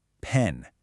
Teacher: Feel that little puff of air as your lips press together and then just pop open. That's a billeial sound in action. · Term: bilabial sound